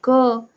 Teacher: जैसे for example आप अ बोलेंगे तो अ का उच्चारण तो अ के रूप में आएगा, लेकिन अगर आप क बोलेंगे तो उसमें क और अ दोनों आ रहे हैं